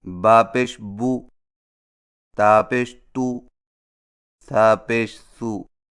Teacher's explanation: سیدھی پیش کی ادائیگی: سیدھی پیش حرف کے اوپر واو کی شکل کی مڑی ہوئی لکیر کو سیدھی پیش کہتے ہیں، اور سیدھی پیش ہونٹوں کو گول کر کے بغیر کھینچے اور جھٹکا دیے پڑھا جاتا ہے